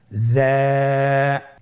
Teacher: জিহ্বার আগা সামনের নিচের 2 দাঁতের পেট ও আগার সঙ্গে লাগিয়ে উচ্চারিত হয়